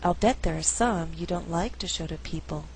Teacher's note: I could choose to stress in the second half of the sentence only like and people